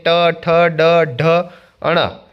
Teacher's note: તાળવાના અગ્રભાગમાંથી બોલાતા શબ્દને મૂર્ધન્ય વર્ણો કહે છે.